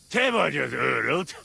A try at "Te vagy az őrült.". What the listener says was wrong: Te vagy az őrült. Almost good, but it's a long Ö. Őrült.